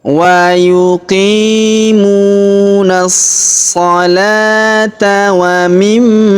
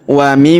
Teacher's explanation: huruf ma berharokat tasydid, maka kita tahan dan kita tekan serta kita dengungkan 2-3 harokat.